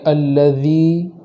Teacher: الذی کے اندر یا مدہ کریں گے، ایک الف کے برابر تاخیر کر کے پڑھیں گے